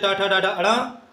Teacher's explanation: इन वर्णों का उच्चारण स्थान होता है मूर्धा। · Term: मूर्धन्य वर्ण